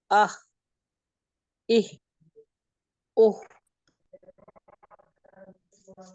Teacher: हा दरमियानी हलक से है